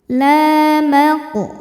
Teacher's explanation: Qaf sukun hukumnya qalqalah sughra, sebab ada huruf qalqalah yang sukunnya sukun asli dan ada di tengah bacaan. Cara bacanya dipantulkan dengan pantulan yang besar.